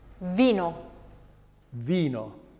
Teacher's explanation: Remember we said that the letter V was the same in English as it is in Italian, and indeed that's correct, as is the letter F, and they're formed in exactly the same way. V is a labiodental fricative and it is voiced